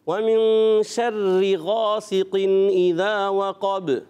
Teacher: را مشدد تھوڑا رک کر ادا کرتے ہیں